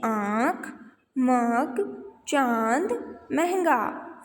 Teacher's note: हवा नाक और मुंह से निकलती है